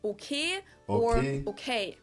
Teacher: pronounce your vowels more like just one letter just one sound straighter